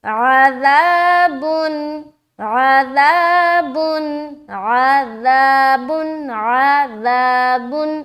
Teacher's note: आइन को हलक से निकालना है, लाल को नरमी के साथ बगैर सीटी के निकालते हुए अलिफ मद्दा भी करना है